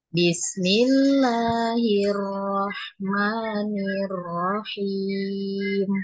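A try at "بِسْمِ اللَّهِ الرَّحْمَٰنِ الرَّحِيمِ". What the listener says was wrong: Bismillah bismill bism itu terlalu lama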